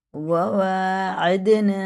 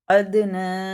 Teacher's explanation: حرکات والے حروف کو تھوڑا بھی نہیں کھینچیں گے، لیکن واو کھڑا زبر وا اسے ایک الف کے برابر کھینچیں گے۔ عین کو دال میں لگاتے ہوئے، دال میں قلقلہ ہے۔